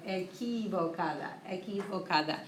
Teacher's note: Q-U in Spanish isn't qua like English. It's k. Makes a K sound.